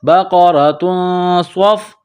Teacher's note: میں چھپائیں گے، غنہ کریں گے، بقرۃ، صاد فا زبر صف، صاد کو موٹا کرنا ہے، صاد میں سیٹی کی آواز پیدا کرنی ہے ، بقرۃ صف، را کے اوپر زبر ہے تو را کو